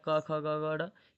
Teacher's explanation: क वर्ग कंठ से बोला जाता है।